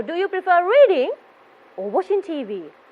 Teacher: when it comes to reading you have this rising effect when it comes to watching tv your voice will be going down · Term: rise and fall